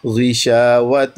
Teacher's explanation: غین کے نیچے زیر ہے اور پھر بھی مفخم پڑھنا ہے